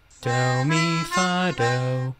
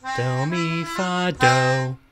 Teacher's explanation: stressing the final toneme marks the feminine